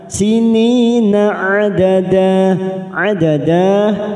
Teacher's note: sini ada kasrah bertemu ya sukun, 2 harokat kita panjangkan. Sinina adada mat iwad kita panjangkan 2 harokat.